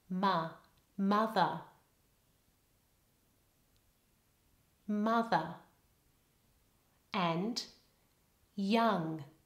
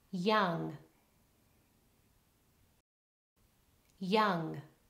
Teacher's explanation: the vowel there is A. It's not rounded at all.